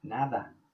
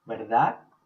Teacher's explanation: D is going to sound like TH, kind of like in that.